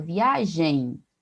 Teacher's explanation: é como se eu tivesse, no lugar daquele M ali, um sonzinho de I. Observe na transcrição fonética aqui, né, foneticamente nós teríamos aí como se fosse, né, o E nasalizado e o som fechado, né, e um sonzinho de I, né, o I semivocálico representado pelo Y ali.